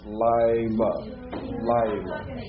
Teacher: Now that shava under the yod is silent, but if you're not careful, you'll make it vocalized because of the yod, because it's hard to come out of the yod to the lamed.